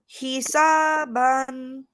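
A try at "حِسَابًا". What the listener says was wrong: Yes, Hisaban.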